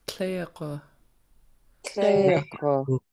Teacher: Tleg. Yeah, we have high tone and then low tone